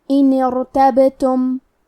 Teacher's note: ہم حرف الباء کو ہلاتے ہوئے یہ کلمہ کو پڑھیں گے